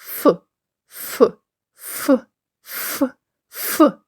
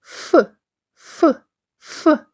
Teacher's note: нижня губа наближена до верхніх зубів а між ни ними тоненька щілина саме у цю щілину виходить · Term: звук ф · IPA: [ф]